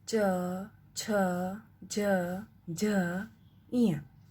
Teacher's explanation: दूसरा है च वर्ग च, छ, ज, झ, इय। ये तालु से उच्चारित होने वाला वर्ग है